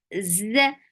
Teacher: There is buzzing sound in za because it has safir